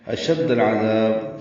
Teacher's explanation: اشد العذاب، شین دال سے دال لام سے ملائیں گے، لام ساکن بظاہر قمری، عین کی وجہ سے عین وسط حلق سے نکالیں گے، دال کو لمبا کریں گے اور با ساکن پہ قلقلہ کریں گے.